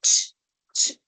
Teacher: Ocurre una oclusión seguida inmediatamente por una fricación y ahí encuentras el sonido de la letra che. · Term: modo africado